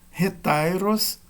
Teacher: acento circunflexo na penúltima e a última é uma vogal breve